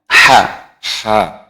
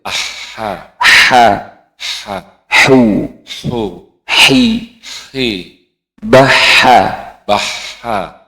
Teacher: H-nya itu lebih tipis lagi, jangan ada sedikit ngoroknya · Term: Huruf H